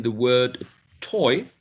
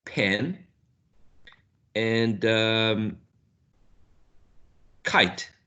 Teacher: you can find aspiration present in these in this consonant sounds but only when they are in initial position